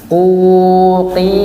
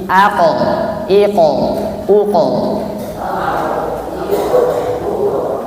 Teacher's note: makhrajnya huruf qaf, yakni yang belakang bertemu dengan langit-langit lunak. Bukan di tenggorokan, sebelum di tenggorokan, yakni bukan di tenggorokan, juga di belakang kaf.